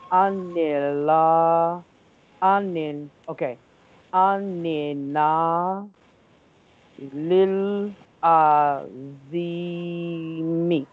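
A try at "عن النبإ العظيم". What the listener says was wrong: Don't read the last vowel of the line, okay? Line finishes here. So before that, we don't read the last vowel. Anin naba il azim.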